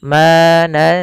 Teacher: Bukan lagi nansakh atau hilang nunnya, tapi dia samarkan karena dia bacaan ikhfa.